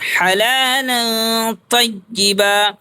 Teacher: تنوین ہے اور تنوین کے بعد حروف اخفا میں سے تا ہے، اخفا کریں گے